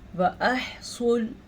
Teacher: صوت کو پر موٹا کر کے پڑھنا ہے، دونوں ہونٹوں کو گول کریں گے تو موٹا نکلے گا۔ پھر سے ادہ نہیں پڑھنا آپ نے، اس کو ٹھیک کر لے۔